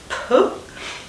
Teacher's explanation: voiceless p, bilabial plosive